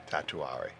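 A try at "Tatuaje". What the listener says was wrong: There's no R in it.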